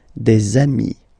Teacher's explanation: Okay, and so you've got des ami, okay? And if you make the liaison, so the link between the two, you will get des amis